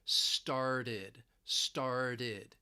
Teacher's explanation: you hear a d sound instead of a t. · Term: flap t